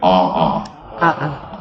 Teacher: the okina in between the vowels simply tells me to break the sound of the vowel